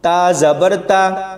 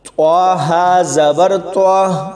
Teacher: تا کی آواز تھوڑی باریک ہوگی اور طوا کی پر یعنی موٹی ہوگی